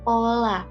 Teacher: Fonem dalam bahasa dapat mempunyai dua macam pelafalan, gitu. Misalnya fonem P yang berada pada awal kata itu dilafalkan secara lepas, seperti pola.